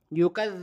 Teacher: थोड़ी सी बाहर निकालेंगे जरा सी आधी इंच से भी कम जबान बाहर निकाल के ऊपर के दांतों में लगेगी ऊपर के दांतों की जो नोक है · زبان باہر نکال کے اوپر کے دانتوں میں لگے گی، اوپر کے دانتوں کی جو نوک ہے وہاں پر یکذب۔ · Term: ذال